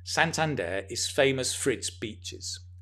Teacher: when we're speaking the four becomes fa it's famous for and then you stress the next thing so